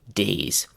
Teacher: make sure that your vocal cords continue vibrating from the start of the word to the end of it